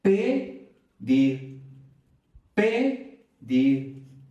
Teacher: Esta elevación, esta fuerza, pedir, nos está indicando la sílaba tónica o el acento prosódico. Y es justamente ahí donde va a cambiar la E por la I.